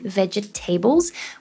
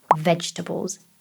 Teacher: So we do not say ve-ge-ta-bles. We would say here vegetables. Three syllables